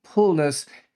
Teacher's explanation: Korean doesn't have an F, and so, especially older Koreans from previous generations will say a P instead of an F